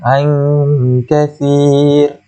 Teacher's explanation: ra itu adalah ra yang tarqiq, nipis. Kita tak boleh panjang, tak boleh tebalkan dia.